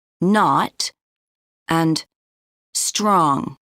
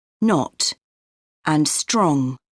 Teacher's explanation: in North American English o often sounds like ah